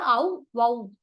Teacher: அவ் என்ற எழுத்து தனித்து வரும்போது அது வந்து தனக்குரிய இரண்டு மாத்திரை அளவில் முழுமையாக ஒலிக்கும்